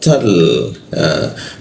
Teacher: Ta biasa, ta masuk ke dalam tal. Nah huruf ta itu seperti ada hembusan desis sedikit ya, karena udaranya bocor dia